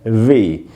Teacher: ये भी एक लेबियोडेंटल साउंड है, वी। ये ऊपर के दांतों को नीचे के होठों पे टिकाना है